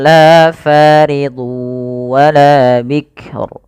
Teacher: Fa ada Mad thii yaitu ditandai dengan fathah yang bertemu dengan alif setelahnya panjangnya dua harakat